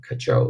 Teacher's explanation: cajole▁重音在第二音节啊